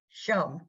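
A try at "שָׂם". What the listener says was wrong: No, but it's not that letter. It's an S. It's not an SH. Sa, like a short A. Sam, like Sam, but Sam. Sam. It's not a, here, look at the sin and the shin right there.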